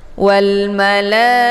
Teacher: mad wajib muttasil ini dibaca panjang, boleh 4 atau 5 harokat